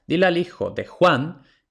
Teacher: en de Juan de no tiene acento prosódico el acento prosódico no llega hasta Juan